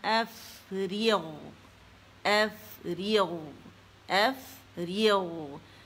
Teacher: فا میں ہمس واضح کریں گے